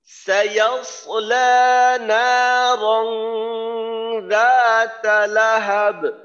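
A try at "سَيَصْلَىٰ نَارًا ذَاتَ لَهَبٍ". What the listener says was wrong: হ্যাঁ, নারং গুন্নাটা কিন্তু কম হয়ে গেল, গুন্না করতে হবে, কুন্না যেন বাদ না লাগে। আর লাহাবিউ কেন? লাহাব ওয়াকফু, ওয়াকফু করে আমরা পড়তেছি ওয়াকফু। রা তালাহাব, রা তালাহাব।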